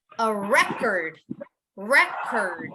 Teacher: You want to emphasize the beginning because it's a noun, right? So you would want to emphasize RE.